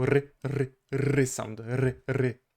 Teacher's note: Then we have our R, which is stronger and rolling in Polish, so r sound, r.